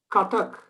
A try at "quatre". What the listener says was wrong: Quatre. Quatre. there's no syllable breaking in it. It's just quatre.